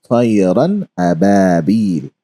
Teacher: you're not going to nasalize the sound and stretch it. You're going to recite it as طيرا أبابيل.